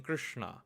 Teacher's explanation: Please bear in mind this is shna and not shna. Shna, the retroflex sha with the retroflex na,